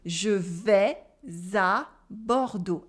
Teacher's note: And again, I do la liaison between vais and a.